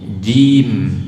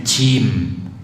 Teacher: Syiddah dan jahar, kuat dan tertahan udaranya. Ya, jim. Jangan sampai cim.